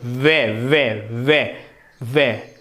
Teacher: दांत और ओष्ठ से वे बोला जाता है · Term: दंतोष्ठ